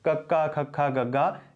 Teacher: ਜਿਵੇਂ ਜਿਹੜੀ ਕੱਕੇ ਤੋਂ ਜਿਹੜੀ ਪੰਕਤੀ ਸ਼ੁਰੂ ਹੁੰਦੀ ਹੈ ਉਸ ਨੂੰ ਅਸੀਂ ਕੰਠ ਹੀ ਕਹਿੰਦੇ ਹਾਂ, ਉਹਦਾ ਉਚਾਰਨ ਸਾਡੇ ਕੰਠ ਚੋਂ, ਸਾਡੇ ਸੰਘ ਦੇ ਵਿੱਚੋਂ ਹੁੰਦਾ ਹੈ।